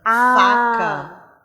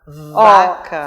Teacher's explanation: são sons que a gente faz exatamente o mesmo movimento aqui na boca e eles se diferenciam única e exclusivamente pela vibração das nossas pregas vocais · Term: fonemas surdos e sonoros, Fonemas surdos e sonoros